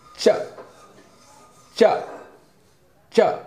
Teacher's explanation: तो ये ऊपरी हिस्सा, इसको जब जीभ स्पर्श करता है च च च, जब उसके स्पर्श के बिना हम जो है नहीं बोल सकते, तो तालु से च छ ज झ य। तो ये च वर्ग जो है वो तालु से बोला जाता है, ये भी स्पर्श व्यंजन है